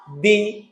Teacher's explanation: দাল জের দি, জিহ্বার আগা থেকে সামনের দাঁতে লাগিয়ে দি